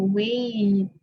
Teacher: you're somehow pronouncing A, long A sound, transitioning to the long I sound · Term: diphthongs